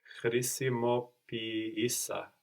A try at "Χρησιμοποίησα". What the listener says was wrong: And which one are you accenting? Χρησιμοποίησα. So we have the accent third from the end, no? But because we are treating these two E's like two separate syllables, the first one takes the accent and we get χρησιμοποίησα. So actually it feels like we have the accent second from the end.